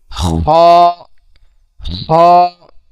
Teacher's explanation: খর উচ্চারণ হলো কন্ঠনালী শেষ থেকে হইতে হবে।